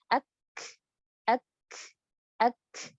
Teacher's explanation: kalau kaf dia berangin karena sifatnya mahmusa.